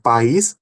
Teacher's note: No segundo caso, país, a sílaba tônica é is. E essa distinção é marcada pelo acento.